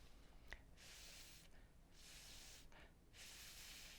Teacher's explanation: And how you make the sound for letter F is you take your top teeth and you touch them to your bottom lip, and then you're going to blow air through without using your voice. Watch me.